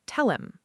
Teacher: Him often reduces to him with the h sound disappearing completely. Tell him sounds like tell him.